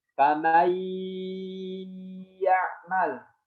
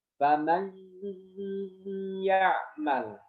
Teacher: kalau contoh yang mengidghamkan saja adalah famay ya'mal, tidak ada suara perubahan di hidung. Tapi kalau dengan digunnah, famay ya'mal, seperti itu.